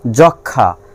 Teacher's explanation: ক্ষীয়র সঙ্গে ম আছে, এখানে ময়ের উচ্চারণ হবে না